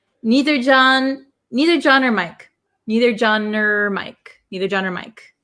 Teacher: nor becomes very short so we change it just to the r sound